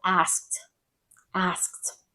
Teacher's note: So A-S-K-E-D, asked. And so it almost sounds like A-S-T, asked, but it's asked. There's a little K in there.